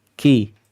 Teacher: kafnya memang Hames istifal turun lidahnya infitah terpisah dari langit-langit mulut